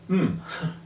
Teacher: Because the sound that it represents is pronounced M with your lips closed and the air coming out your nose. So, a bilabial nasal is involved in the pronunciation of M.